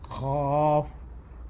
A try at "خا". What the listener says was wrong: خوف نہیں، دیکھیے بتایا ہمیں، فا کی ساؤنڈ نہیں آتی ہے خوا میں. خو.